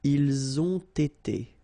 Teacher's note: So same thing here, you get first the liaison z, and then you get the t